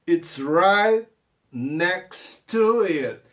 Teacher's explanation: E o T do next não vou falar por causa do T do to.